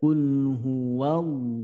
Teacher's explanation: lafaz Allah ini tafkhim yang artinya tebal panjangnya dua harakat · hu itu keluarnya dari pangkal tenggorokan. Kemudian ketika diucapkan ada gemaknya ya.